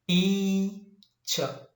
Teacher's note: the first syllable is longer, higher and louder, whereas the second syllable is very unstressed